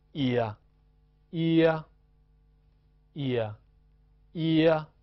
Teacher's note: 但是它的重音是落在一的上面 · 短音一呀，它的发音是从一向啊滑动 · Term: 复合元音